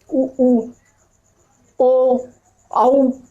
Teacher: ऐसे स्वर जिनके उच्चारण में हमारा मुंह गोल हो उसे कहेंगे हम वृत्तमुखी स्वर